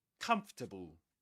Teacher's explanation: the main stress goes on the first syllable